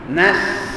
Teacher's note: nasa-nasa tu Sebab Dia tak jaga sifat safir bagi huruf Sin Sin ni sifatnya safir ada bunyi desiran angin